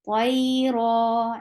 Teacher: ra will be heavy because ra is with fatha. So the sound should be raw, like raw material.